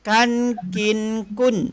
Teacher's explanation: Dalam Al-Quran tidak ada bunyi ken. Ken tak ada. Yang ada bunyi kin, bukan bunyi ken.